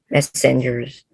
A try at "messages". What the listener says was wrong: messages, not messenger. Messages